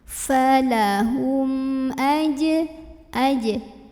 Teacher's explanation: mim sukun ini dibunyikan dengan jelas, bunyi dan tidak perlu ditahan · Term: idhar syafawi